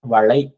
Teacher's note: ஐ என்ற நெடில் எழுத்து தனக்குரிய இரண்டு மாத்திரையிலிருந்து குறைந்து ஒலிப்பது ஐகாரக் குறுக்கம்